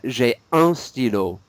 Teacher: Don't pronounce the N, though. It's a nasal N.